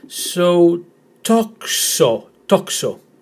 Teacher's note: With the emphasis in the first syllable.